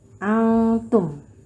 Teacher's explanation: Bacanya samar-samar ya, cara membacanya samar-samar karena ini merupakan bacaan ifa hakiki.